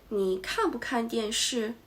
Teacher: Even if it's a question, the intonations falls gradually after the stress. The affirmative part is stressed, and the negative part is unstressed. · The affirmative part is stressed, and the negative part is unstressed. In this sentence is that the first 看 is stressed, and 不看, please read fast, and then the intonations falls gradually.